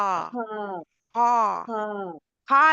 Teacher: खा के लिए जुबान की जड़ भी ऊपर उठती है ना